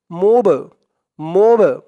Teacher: এই বা টা হচ্ছে কল কলার হরফ ধাক্কা দিয়ে পড়তে হবে উচ্চারণটা হবে মিম বা পেশ মুব মুব এরকম একটু ধাক্কা খাবে